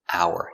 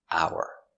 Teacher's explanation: Hour, the H is silent. And we say hour. No h sound.